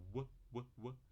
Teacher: na verdade é labial e velar, já que se aproxima de um U, né? É um U rápido, tá? · Tem aproximante bilabial, o símbolo parece SW, e a gente fala w.